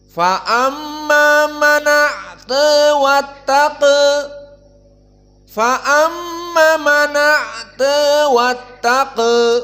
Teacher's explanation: Idan hadal fathah nukila ila maqablahu ay nun man a'ta. Nun sakinah dihapuskan hamzahnya dalam keadaan fathah, maka fathah dari hamzah pindah ke nun menjadi mana, dan hamzahnya hilang berarti tinggal ain sakinah jadi mana. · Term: an-naql